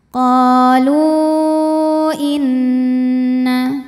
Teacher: maka lam dipanjangkan boleh empat boleh lima harakat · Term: Mad Jaiz munfasil